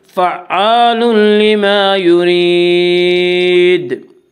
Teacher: وقف کرنے کی صورت میں دال میں قلقلہ ہوگا، کیونکہ دال حروف قلقلہ میں سے ہے۔